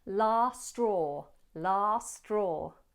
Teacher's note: In this phrase, let's open the mouth wide for a long ah in last, last. If said fast, the T in last may be dropped. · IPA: /lɑːs strɔː/